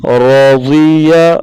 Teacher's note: را اور ضاد کو پر پڑھیں گے